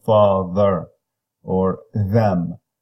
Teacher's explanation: The is exactly the same as in father or them, except that it is a voiced interdental fricative